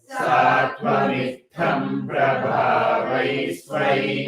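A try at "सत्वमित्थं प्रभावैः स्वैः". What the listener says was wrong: I can hear some extra yes sound somewhere. Say again.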